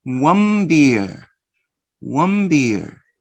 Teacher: you change the sound N, and now you're going to produce the sound mm